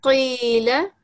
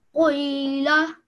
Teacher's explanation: whenever we say this letter, it's a thick letter, we say it from our throat